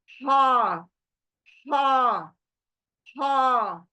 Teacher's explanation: ये बीच हलक के अंदर बीच से आ रही है और झर कर आ रही है। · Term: हलक की लेटर